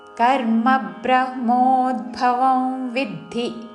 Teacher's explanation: వౌ అనుస్వారము నాసిక వ ఉచ్చారణ